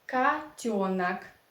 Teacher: yo, this vowel in Russian language, is always stressed. It is always under the stress.